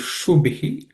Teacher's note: The Shu is cerebral sh. The Bhi is again aspirated, just like Bhishma.